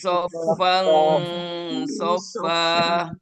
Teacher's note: Ada iwad ya, yang seharusnya dibaca soffan tapi tidak dibaca an ya, dihilangkan an-nya tetapi dipindahkan menjadi alif.